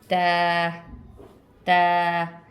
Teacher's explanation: ता हमने कैसे पढ़ा था? ता के लिए हमने अपनी ज़बान की नोक को ऊपर वाले दांतों की जड़ से टच किया था, जड़ से, यानी कि जहाँ से हमारे ऊपर वाले दांत शुरू हो रहे होते हैं वहाँ हम ज़बान टच करेंगे और पढ़ेंगे ता ता।